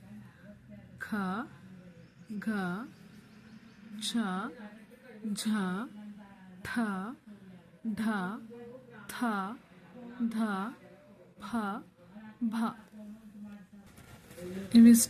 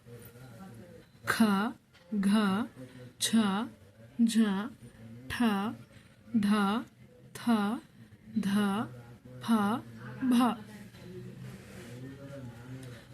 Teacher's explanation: ಈ ಅಕ್ಷರಗಳನ್ನ ಉಚ್ಚರಿಸುವಾಗ ಅಂದ್ರೆ ಹೇಳುವಾಗ ಹೆಚ್ಚು ಉಸಿರನ್ನ ತಗೊಳ್ತೀವಿ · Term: ಮಹಾಪ್ರಾಣ ಅಕ್ಷರಗಳು